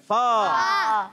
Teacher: ऊपर के दांतों के किनारे जब नीचे वाले होंठ के तर हिस्से से लगते हैं तो अदा होता है फा।